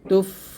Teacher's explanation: ফা একটা হামসে হরফ, মানে এগুলো বাতাস বের হয়। যখন সাকিন থাকে তখন বাতাস বের হয়।